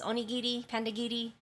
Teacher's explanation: It's not a hard R. It's a very soft R, and then their I's are E. They sound like E.